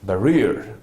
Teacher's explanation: For example, now I'm basically referring to the fact that this barriers has to be pronounced as barriers rather than barrier, because in the other pronunciation that I have just said it, barrier is where I am, instead of ba, I am placing my stress on ra